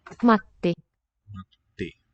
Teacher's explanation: There you hear that little bit of silence in the middle of the word. Matti. That means we have a double consonant.